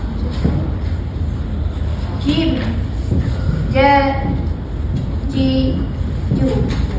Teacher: Satu aje huruf yang kena sentuh tengah lelangit. Kalau tak sentuh tak jadi jim tu. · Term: huruf jim